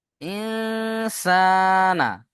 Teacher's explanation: নুন সাকিন কে নাকের মধ্যে তুলে এক আলিফ গুণনা করতে হবে